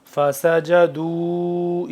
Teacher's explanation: چھوٹی مد ہے، یہاں پہ تھوڑا سا کم لمبا کریں گے، 2 سے 3 الف کے برابر. فَسَجَدُوا إِلَّا ابلیس ابا حمزہ زبر با کھڑا زبر با ابا واستکبر وکان من الکافرین.